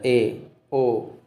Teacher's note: अर्ध समृत स्वर, आध यानी कि इससे थोड़ा ज़्यादा खुलता है। ए और ओ इसके उच्चारण में समृत से थोड़ा अधिक मुख खुलता है, यानी कि इससे थोड़ा ज़्यादा मुख खुलता है, यानी कि मुख खुलने के आधार पर ये वर्गीकरण किया गया है कि इन स्वरों को बोलने में आपका मुंह कितना खुल रहा है।